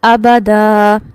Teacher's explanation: جب ہم نے ایک الف سے بدل دیا تو بیسیکلی یہاں پر کیا ہوتا ہے، زبر تنوین کی صورت میں جب ہم وقف کر رہے ہیں تو وہاں الف مدہ ہو جاتی ہے جسے ایک الف کے برابر لمبا کیا جاتا ہے